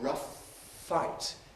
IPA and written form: ˈrʌf ˈfaɪt (rough fight)